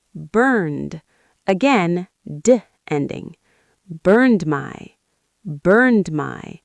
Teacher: In fast speech, it might sound like burn my.